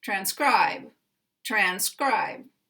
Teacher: here we have the primary stress on the second syllable and we have the secondary stress on the first syllable